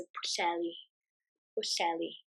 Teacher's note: So push, you've got this oo sound and the double L sound, which is push. And it would be heli, but we sort of don't pronounce the H that strongly, just to make it easier.